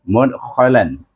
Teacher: dal mati dibaca dengan qalqalah sughra